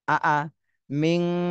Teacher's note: নুন সাকিনে পরে ইকফার হরফ তা এসেছে, এই জন্য এই নুন সাকিনে ইকফা গুণা করতে হবে। মিং তুম, এই মিম সাকিনেও গুণা করতে হবে, কারণ মিম সাকিনের পরে যদি বা আর মিম এই দুইটা হরফ আসে তাহলে গুণা করতে হয়।